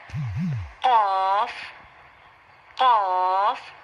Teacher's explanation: اس کا مخرج کچھ یوں ہے، یعنی نکلنے کی جگہ یہ ہوگی کہ جب زبان کی جڑ جو کہ نیچے ہے، یعنی زبان کی جڑ تالو کے اس نرم حصے سے، جہاں کی چھوٹی سی ایک، جس کو ہم کوا بولتے ہیں، کوے کے ساتھ تالو کا جو نرم حصہ ہے اس کے ساتھ جب زبان کی جڑ ٹچ ہوگی، لگے گی، تو وہاں سے حرف قاف نکلے گا